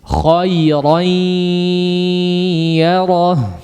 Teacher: Digunnahkan atau disertai dengan gunnah yang panjang, dimasukkan ke dalam khayshum atau pangkal hidung.